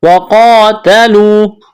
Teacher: قاف کو موٹا کرنا ہے، ایک الف کے برابر کھینچنا ہے